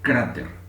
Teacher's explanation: Ya la palabra cráter recibe el acento, la carga en la penúltima sílaba.